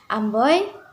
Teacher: diftong naik menutup maju oi